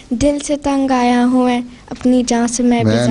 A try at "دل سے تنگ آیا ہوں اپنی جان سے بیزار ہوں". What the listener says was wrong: میں نہیں ہوں دل سے تنگ آیا ہوں اپنی جان سے بیزار ہوں.